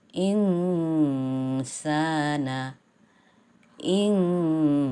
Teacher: nun sukun atau nun mati disini harus dibaca samar-samar tidak dibaca jelas seperti Idhar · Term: ikhfa